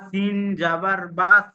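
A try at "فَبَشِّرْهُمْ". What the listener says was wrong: সিনটা একটু মোটা করুন তো।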